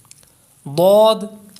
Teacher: ضاد، اس کو حروف حافیہ کہتے ہیں، یہ زبان کی کروٹ اور اوپر کی داڑھوں کی جڑ سے ادا ہوتا ہے